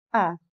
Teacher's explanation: इसके उच्चारण में जीभ का मध्य भाग समान अवस्था में रहता है। इसे केंद्रीय या उदासीन स्वर भी कहा जाता है। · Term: मध्य स्वर